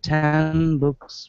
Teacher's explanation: the N before m b or P sounds more like M